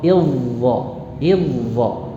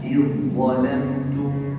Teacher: Sudah melebur ke dha. Jadi pengucapannya tidak ada lagi unsur dalnya, langsung ke dha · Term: idgham